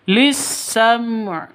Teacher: mati bertemu dengan ain izhar syafawi jelas terang lisam begitu ya ainnya jangan dihilangkan harus disukunkan tetap dibaca lisam